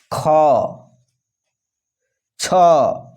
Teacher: महाप्राण वर्णों का उच्चारण श्वास अधिक परिमाण में निकलता है, ठीक है, ज़्यादा निकलता है।